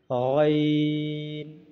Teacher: गैन का मखरज हलक के मुंह के जानब वाले हिस्से से गैन अदा होते हैं